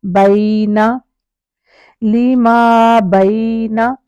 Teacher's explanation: ساتھ الف بھی ہے، لِمَا زبر کے ساتھ الف بھی ہے، بَيْنَ نون کو زبر ہے الف نہیں ہے، اب الف نہیں ہے تو الف کا ٹائم بھی نہیں دیں گے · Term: سنگل حرکت